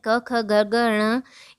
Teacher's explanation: क की पूरी लाइन यानी क ख ग घ ण, ये सारे वर्ण कंठ यानी गले से निकलते हैं